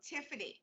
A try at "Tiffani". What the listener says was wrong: Tiff'ni. Tiff'ni with an I. Tiff'ni. Tiff'ni and an I at the end. Tiff'ni. There's no A in the middle. Tiff'ni.